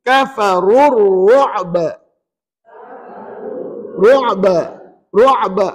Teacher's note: Bila kita wakaf, pastikan tidak ada mat apa-apa pada kalimah ru'ba. Tak ada mat apa-apa tau. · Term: qalqalah kubra